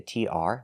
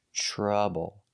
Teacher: Here we see the TR making the ch sound, like chicken. Trouble. And again, the OU is not making the ow sound, it's making the short U.